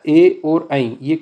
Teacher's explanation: कंठ प्लस तालु से निकलता है। ए और ऐ कंठ और तालु से निकलता है। ये कंठ है। कंठ के ऊपर जो है वो तालु है।